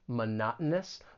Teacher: the stress is on that second syllable and the T it's going to be a gladle t this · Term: glottal T